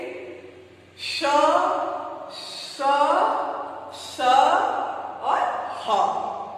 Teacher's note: बच्चों, जब इन व्यंजन वर्णों का हम उच्चारण करते हैं तो वायु हमारे कंठ से निकल के मुख के किसी न किसी भाग में रगड़ खा के बाहर निकलती है। हमारे मुख से गर्म वायु निकलती है। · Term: ऊष्म व्यंजन